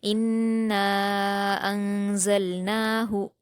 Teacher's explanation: زا پر حرکت ہے، لام پر جزم ہے، تو زا کو لام سے ملا دیں گے بلا قلقلہ کیے